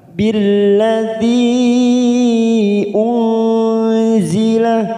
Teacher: Billadzi unzila, nun sukun bertemu zain ikhfa ausat, kita samarkan 3 ketuk